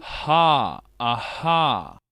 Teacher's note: na glote, ou seja, lá embaixo, já nem tem movimento da língua aqui nesse som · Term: consoante fricativa